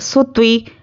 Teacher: سین کو باریک پڑھیں گے، تو کو موٹا پڑھیں گے.